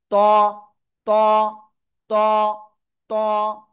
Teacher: জিব্বার আগা, এই যে উপরে 2 দাঁতের গোড়ায় লাগান, লাগিয়ে একটু মোটা আওয়াজে উচ্চারণ করতে হবে।